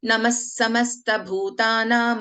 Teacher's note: Visarga when it is followed by Sakaraha. Again, in this case, we do not pronounce the complete Visarga.